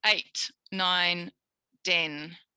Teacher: the voiceless t is made with a d.